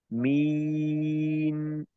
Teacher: নুনটাকে একটু সময় রেখে, মিন, একটু সময় রেখে সুন্দর মতো আওয়াজটাকে শেষ করা, যেন মিন এরকম ফিরে না আসে।